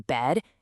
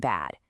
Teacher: It is all about your jaw. For the red dress sound, your mouth is just kind of comfortably open. But for the black cat sound, you have to really open up and drop your jaw.